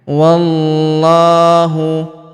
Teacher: huruf wa langsung sambung ke huruf lam yang berharakat tasydid pada lafaz Allah atau lafzul jilalah. Kita tahan dan kita tekan